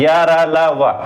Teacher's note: अंतस्थ व्यंजन दोस्तों, मतलब बिना टकराए आवाज बाहर निकलती है